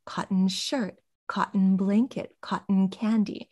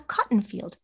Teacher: this is a subcategory of compounds that does not get la-la stress pattern it doesn't get the set phrase intonation however a field where you're growing cotton would be a cotton